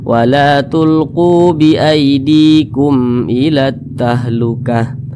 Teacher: Berarti semua hukumnya namanya Izhar Syafawi izhar syafawi ya maka dia dibaca jelas huruf mimnya tidak berdengung jadi dibaca pendek saja jangan ditahan suaranya